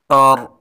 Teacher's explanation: اس را کو پر پڑھیں گے، یعنی را کے اوپر جزم ہے، ان سے پہلے حرف پر زبر ہے، اس لیے را کو پر پڑھیں گے